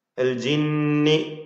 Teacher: നൂൻ മുശദ്ദദ മണിച്ചുകൊണ്ട് ഉച്ചരിക്കേണ്ട ഹർഫാണ്